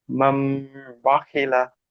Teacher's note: নুন সাকিনের পরে বা এসেছে, তাই নুন সাকিনকে মিমের দ্বারাই পরিবর্তন করে এক আলিফ পরিমাণ গুণনা করে পড়তে হবে। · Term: ইকলাব